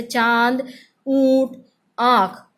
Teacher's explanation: अनुनासिक का उच्चारण करते समय श्वास वायु नाक और मुख दोनों से बाहर आती है और उच्चारण के समय मुख को खोला जाता है।